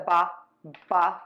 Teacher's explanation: you're just going to open your lips and the air Puffs out voice box is on and moving